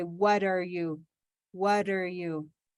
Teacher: the t of what becomes a kind of a d sound to connect